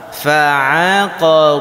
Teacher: Ain itu keluar dari tengah tenggorokan.